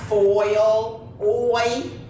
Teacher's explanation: you have two vowel sounds that glide together